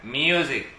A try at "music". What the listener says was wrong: No musik ya, musik bahasa Indonesia.